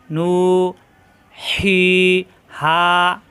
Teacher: কণ্ঠ চাপ দিয়ে হি জবরের বামে খালি আলিফ এক আলিফ টান হা এই যে লম্বা করলাম এটাকেই বলা হয় মাদ অর্থাৎ এক আলিফ টেনে পড়া নু হি হা এই হা করে চাপ দিয়ে হা মুখ খোলা